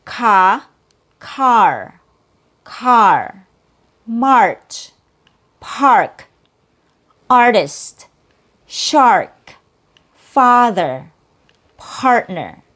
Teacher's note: It's a bigger jaw drop when compared to the short a sound.